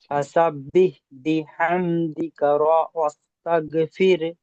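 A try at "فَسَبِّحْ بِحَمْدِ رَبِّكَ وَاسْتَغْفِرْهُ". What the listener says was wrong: বিহামদিকা বলছেন এখানে, বিহামদিকা এখানে না, বিহামদি রাব্বিকা ওয়াস্তাগফির।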